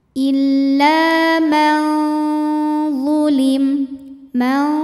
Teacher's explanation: hukumnya adalah ikhfa ausat karena ada nun sukun yang menghadapi huruf cara bacanya Nun ini dibaca samar-samar jadi kita siap-siap membunyikan huruf disertai bunyi dengungan samar dan dengungannya sama karena huruf ini makhrajnya tidak terlalu dekat juga